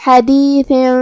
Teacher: کلمت حدیث میں یہاں حرف الحا ہے، ہا کو ہم حلق کے درمیان والے حصے سے پڑھیں گے، پھر آخر میں حرف الثا ہے۔ ثا کی ادائیگی زبان کے سر اور اوپر والے دانتوں کے اندرونی کناروں سے ہے، جو کہ اس کے نیچے تنوین زیر ہے۔